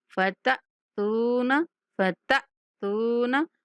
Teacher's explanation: تا کے بعد ساکن حمزہ ہے، جھٹکے کے ساتھ پڑھیں گے